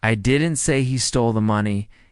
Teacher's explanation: The stress is on he